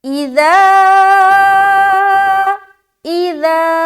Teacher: اذا 3 سے 4 الف کھینچیں گے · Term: مد منفصل